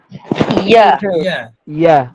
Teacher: ইয়ার মাখরাজের ক্ষেত্রে জিহ্বার মধ্যখান তার বরাবর উপরে তালু, কিন্তু দেখেন সবাই একটু ফাঁকা আছে